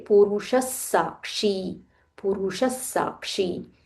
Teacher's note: when we join Purushaha with Sakshi, we say Purushas Sakshi. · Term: Visarga is followed by Sa